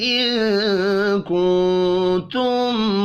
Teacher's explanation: ان کنتم دو نون ساکن ہیں، دونوں پر اخفاء حقیقی ہوگا.